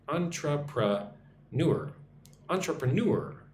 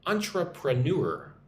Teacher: Emphasis on the last syllable.